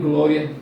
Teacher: Você diz glória, o A fica mais tempo, o A é mais sonante, o A aparece mais, é a vogal, é a maior. · quando a primeira é a semivogal, a primeira é a mais fraquinha e a segunda é a mais forte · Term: ditongo crescente